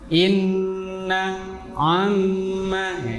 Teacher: tempat keluar huruf itu adalah alkhaisyum atau batang hidung yaitu untuk tempat keluarnya gunah gunah itu dengung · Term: gunnah